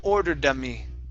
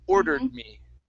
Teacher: good one more time ordered me order me good okay so we pronounce half of the D sound only so we don't want to finish the D this is how you connect it without pronouncing that extra sound